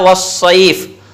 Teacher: دونوں ہونٹوں کو گول کر کے واو ادا ہوتا ہے